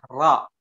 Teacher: Ro memiliki makhraj di punggung lidah ya antara langit-langit atas ya, langit-langit atas dengan gusi.